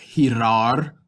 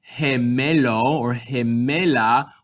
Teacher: So we can have ga, we can have go, we can have gu, but when we have G-I or G-E, we're going to hear he or he. So with our G-I and G-E, we get more of an H sound